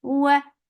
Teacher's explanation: Wa makhraj of waw circling your lips. For fatha open jaws, the sound is short.